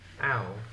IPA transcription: aʊ